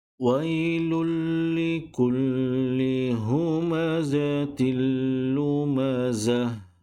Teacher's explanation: Huruf selepasnya adalah huruf lam dan huruf lam di sini ada tanda sabdu, menunjukkan bacaan di sini hanya dimasukkan huruf lam yang pertama ini kepada huruf lam yang kedua, tetapi tidak boleh didengungkan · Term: idgham